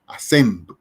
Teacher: la fuerza de acentuación, la fuerza tónica la hacemos en sen